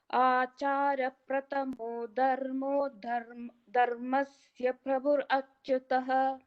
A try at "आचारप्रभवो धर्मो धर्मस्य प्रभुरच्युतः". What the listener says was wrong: Achara prabhavo. I heard a prathamo.